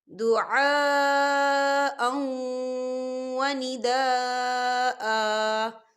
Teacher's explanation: دیکھیں دعاء، حمزہ کے اوپر تنوین ہے اور تنوین کے بعد واو آ رہا ہے، اور واو جو ہے حروف یرملون میں سے ہے، تو یہاں پر ادغام ہوگا، تھوڑا سا غنّے کے ساتھ پڑھیں گے